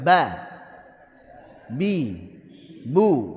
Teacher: dua bibir berarti makhraj huruf ba adalah di asyafatain dua bibir kita bisa mengetahui huruf ba saat berharakat kita ucapkan maka keluar dari dua bibir yang padanya berhenti suara dari sebuah pengucapan jadi berhentinya suara di sini berarti saat apa sukun.